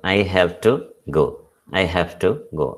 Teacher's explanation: അപ്പൊ ആ വ് എന്നുള്ള സൗണ്ട് ഫ് എന്നുള്ള സൗണ്ട് ആയിട്ട് മാറും